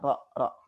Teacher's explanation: pengucapan huruf yang disertai dengan bergetarnya ujung lidah. Jadi ujung lidah kita bergetar ketika kita mengucapkan huruf ro, gitu ya. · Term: at-takrir